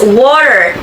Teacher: The T can sound more like a soft D.